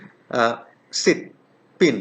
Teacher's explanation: this is a short vowel it is pronounced with the lips in a half close position